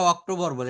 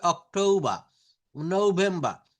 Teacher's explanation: British একসেন্টে আর এর উচ্চারণটা বেশিরভাগ তারা করে না